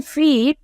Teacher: as it is in feet, it is an high front vowel.